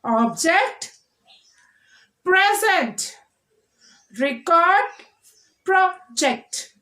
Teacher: nouns with 2 syllables. We are stressing on the first syllable.